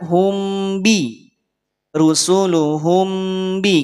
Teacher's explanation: Mim sukun bertemu dengan huruf ba, maka tahan 2 harokat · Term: ikhfa syafawi